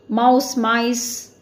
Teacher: தி internal vowel ஆர் தி inside vowel மாறுது. OU, மாவ், அது வந்து MIன்னு சொல்லி ஐ சவுண்டில் மாற்றிடுறோம் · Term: vowel shift